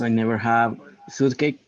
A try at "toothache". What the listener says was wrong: you told me cake, and it is only ache. El cake se pronuncia cake nada más en stomach.